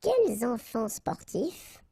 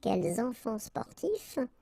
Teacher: you notice here that I've been making the liaison